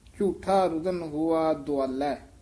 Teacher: ਦੱਦੇ ਦੇ ਹੋੜਾ ਵੀ ਲੱਗਿਆ ਹੋਇਆ ਹੈ, ਔਂਕੜ ਵੀ ਹੈ। ਦਰਮਿਆਨਾ ਬੋਲਣਾ ਹੈ, ਨਾ ਦੋ ਆਲੇ ਕਹਿਣਾ ਹੈ, ਨਾ ਦੁਆਲੇ ਕਹਿਣਾ ਹੈ। ਵਿਚਾਲੜਾ ਜਿਹਾ ਮੇਲ ਬੋਲਣਾ ਹੈ। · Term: ਦਰਮਿਆਨਾ ਜਿਹਾ ਉਚਾਰਨ